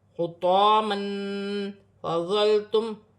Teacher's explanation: 2 زبر کی تنوین میں اخفا ہوگا، کیونکہ 2 زبر کی تنوین کے بعد حرف اخفا میں سے فا آ رہا ہے